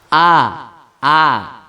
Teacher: membaca huruf a tidak boleh ada nafas yang keluar